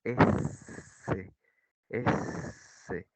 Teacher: En el caso de los fricativos se dice que el aire sale lentamente a través de una pequeña obertura en la boca